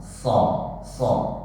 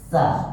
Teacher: Nah, karena kalau sin dan desisnya beda, shad dengan sin beda. Shad lebih besar desisnya daripada sin. Sin kecil sekali, sa kecil.